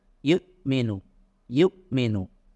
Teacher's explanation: atau nafas seperti kalau contohnya huruf hamzah yuk Minum yuk minum ketika Hamzah sukun itu tidak boleh ada nafas atau udara yang lepas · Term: jaher